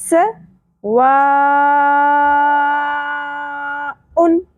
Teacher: سین میں سیٹی کا element clear ہونا چاہیے